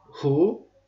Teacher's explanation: WH hərf birləşməyimiz özündən sonra o gələrsə W düşər. Yəni səs olaraq W düşər.